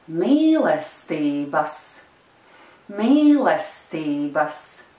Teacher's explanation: there is a small stress on the third syllable